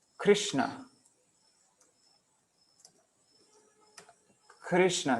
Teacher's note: So you would think that kri, this should be short, but because after it comes two like two consonants without a vowel in the middle, so then this ri becomes long. So this is short because of the shna, and this is long. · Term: guru syllable